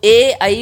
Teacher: कंठ तालव्य कंठ भी और तालू भी इन दोनों का इनमें प्रयोग होता है इनके उच्चारण में